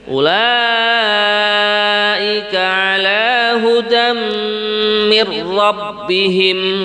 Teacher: pada kalimat hudam, di sini dibaca mendengung karena ada tanwin setelahnya mim. Ini contoh bacaan idgham bi gunnah.